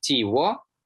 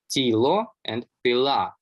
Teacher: the L sound has now shifted to W under the influence of Polish in most contexts